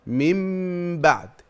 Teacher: الامر الاول قلب النون الساكنه او التنوين ميما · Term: اقلاب